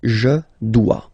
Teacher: OE, when you combine the two, you get the sound wa wa wa.